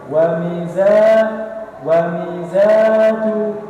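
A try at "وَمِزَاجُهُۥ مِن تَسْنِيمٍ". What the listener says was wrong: Dan panjang-panjang zanya.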